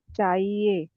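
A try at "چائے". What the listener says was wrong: चाहिए नहीं है, चाय है ये।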